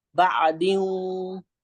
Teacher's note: गुन्ना की मिकदार, एक अलिफ की मिकदार खींच के पढ़ते हैं इसको